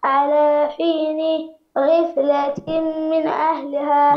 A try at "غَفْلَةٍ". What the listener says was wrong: لا، الغين على فتحة، الغين على فتحة، غفلة.